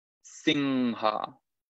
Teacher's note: Eso es anuswara, un sonido específico del sánscrito, que se pronuncia nasalizando la vocal anterior. Entonces, en este caso, esa I se va a convertir en una ing, singha.